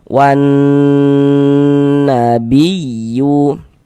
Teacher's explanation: Maka karena dia gunnah musyaddadah, cara membacanya kita gunnahkan. Jadi bagian wan suaranya kita tahan, kita panjangkan sejenak. Wan kita gunnahkan.